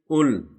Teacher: यह लाम हिलना नहीं चाहिए यह हर्फ कलकल नहीं है